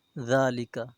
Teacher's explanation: ذال کے اوپر کھڑی زبر ہے، اسے 1 الف کے برابر کھینچیں گے